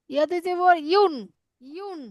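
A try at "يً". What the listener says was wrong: না না, ইয়া দুই পেশ ইউন, তাহলে ইয়া দুই জবর ইউন ইয়া দুই জবর ইয়ান।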